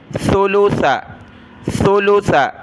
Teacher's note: سا پر زبان نکالی جاتی ہے، سیٹی کی آواز نہیں آنی چاہیے